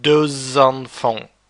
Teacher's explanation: from elephant and that's why you pronounce it does on phone X becomes Z before the vowel by which the next word starts